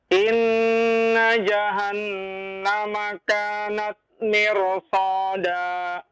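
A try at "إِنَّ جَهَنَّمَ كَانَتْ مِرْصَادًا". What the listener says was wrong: Iya, bagus.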